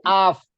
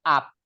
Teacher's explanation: Jadi af, jangan sampai up, tapi af. Nah, jadi ada desisan keluar, namanya ada sifat hames dia, ada sifat ini rokhawah juga ada. · Jadi ketemunya perut bibir bawah dengan gigi seri atas. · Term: huruf F